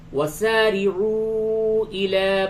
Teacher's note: را کے نیچے زیر ہے، اسے باریک پڑھیں گے